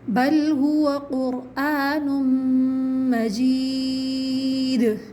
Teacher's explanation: یا مدہ ہے مجید کے اندر، ٹھیک ہے، اور آخر میں قلقلہ ہو رہا ہے